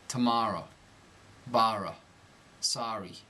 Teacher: these words will be pronounced Ah by the New Yorker